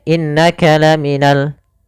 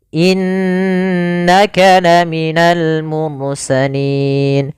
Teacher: mursalin pada lafal innaka di sini ada bacaan gunah yaitu adanya huruf nun yang berharakat tasdid maka cara membacanya itu kita menahan suara ghunahnya